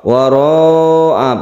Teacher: Wara'a panjang sekali, ini adalah mad wajib muttasil. Wajib artinya harus panjang